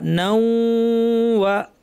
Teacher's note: নাও এই অংশে নাক থেকে গুন্না, ওয়া বলার সময় গুন্না শেষ। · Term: গুন্না সহ ইদগাম